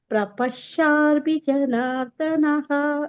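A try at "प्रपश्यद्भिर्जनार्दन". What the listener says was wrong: ಕೊನೆದು ಪ್ರಪಿ ಜನಾರ್ಧನ ಪ್ರಪ ಅಂತ ಬರಬೇಕು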